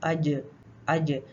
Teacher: ٹھیک ہے، تو اس کی صفات کو اگر ہم دیکھیں تو جیسے میں نے بتایا کہ جیم میں آواز اور سانس دونوں بند ہو جاتی ہے. جیم میں آواز بھی بند ہو جاتی ہے، سانس بھی بند ہو جاتی ہے، اور اسی لیے اس میں قلقلہ پایا جاتا ہے